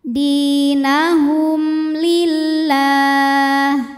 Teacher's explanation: Nah, di sini hurufnya adalah huruf lam. Maka cara baca mim sukunnya ini adalah dibaca dengan jelas. Jadi masih bunyi asal m ya, dan tidak perlu kita tahan. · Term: izhar syafawi, idhar syafawi